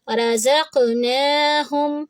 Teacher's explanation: تو ہم جب اس کو زا کو قاف سے ملائیں گے تو زق ایسی آواز ہوگی. رزقناہم، نون کی آواز کو 2 حرکہ کریں گے کیونکہ کھڑی زبر ہے